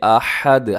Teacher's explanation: اسے آحد نہیں پڑھنا بلکہ احد، ہا کا خیال رکھیے گا